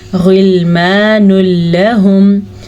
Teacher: غلمان لہم، تنوین کے بعد لام آیا ہے، جس سے کہ یہاں پہ تنوین کے بعد لام آیا تھا تو ہم نے یہاں پہ کسی قسم کا کوئی غنہ نہیں کیا. ملانا ہے لیکن غنہ نہیں کرنا